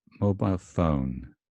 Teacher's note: Secondary stress on the first syllable.